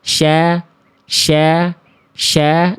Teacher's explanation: Nah, kan enggak nempel ke gigi saya di bawah karena fokusnya di tengah lidah kalau huruf syin.